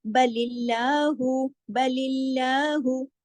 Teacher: अल्लाह के नाम में जो लाम है उसको जलाला नहीं करना, यानी मोटा नहीं करना